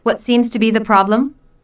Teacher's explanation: Notice that the intonation falls at the end of the question.